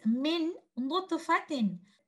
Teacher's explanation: The sakin letter noon will be completely merged into the next letter noon, and there is nothing left from this noon. The oral part where your tip of the tongue is touching the roof of the mouth is gone, and even the sifa of gunna is gone. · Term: merging